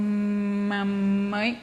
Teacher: o fonema M, tá, como o P, eles são bilabiais. É o som M com os dois lábios e o P, a mesma coisa. A diferença do M é que ele é um som nasal.